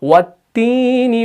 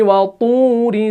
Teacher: ता के ऊपर जब पेश हो तो उसको बारीक पढ़ना है, तौ के ऊपर जब पेश हो तो उसको पुर पढ़ना है, मोटा पढ़ना है।